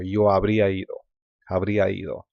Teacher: because habría is a lot more vowel, there's a lot of vowel sounds, and then ido is vowel, it just runs together